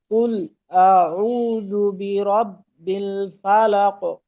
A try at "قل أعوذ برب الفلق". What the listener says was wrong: এইখানে কুল বলার পরে এখানে যেন কোনো প্রকার বিরতি না আসে।